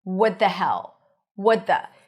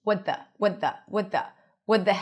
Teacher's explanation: The little trick I can give you here is to connect the t to the th. What? tongue is on the the teeth for the t and then you release it for the th.